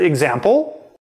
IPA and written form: əgzæmpl (example)